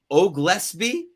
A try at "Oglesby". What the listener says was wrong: But pronounce the L.